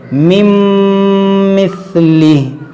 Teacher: نون ساکن کے بعد میم ہے، یہاں پر ہم ادغام کریں گے ، مِن مثلی، اور اس کھڑی زیر کو ساکن کریں گے۔